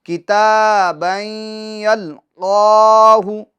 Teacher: اب دیکھیں کتاب میں جو تا پر کھڑا زبر ہیں، ابھی ہم آپ کو بات بتا کر آئیں کہ کھڑی حرکات یہ حروف مدہ کے قائم مقام ہوتی ہے، تو کھڑی حرکات کو یعنی تا کو ہم کھینچیں گے، ٹھیک ہے، ایک الف کی مقدار، کتابً یلقاہ، ٹھیک ہے، اور یہ بئی میں ادغام ہوگا یعنی گنہ کریں گے ہم ایک الف کی مقدار، اور یلقاہ قاف حروف مستعلیہ میں سے ہیں، اس کو ہم پور پڑھیں گے، اور قاف پر یہ کھڑی حرکات ہیں تو اس کو ایک الف کی مقدار ہم کھینچیں گے۔